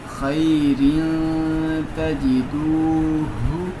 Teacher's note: تنوین کے بعد تا آ گیا تو یہاں پہ اخفا ہوگا، یعنی غنہ کر کے پڑھیں گے